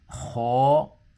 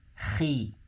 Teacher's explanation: the one with the fatha or a dhamma is going to be heavy, and the one with the kasri is going to be a little bit slightly light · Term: heavy letter